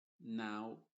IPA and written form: naʊ (Now)